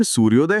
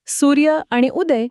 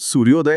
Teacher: इथे सूर्यमधील शेवटचा अ आणि उदय मधील पहिला उ एकत्र येऊन त्यांचा ओ झाला आहे आणि त्यातून सूर्योदय हा जोडशब्द तयार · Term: स्वरसधी